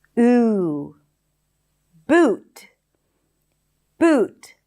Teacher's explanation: the high back vowel is a tense ooh sound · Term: tense oo sound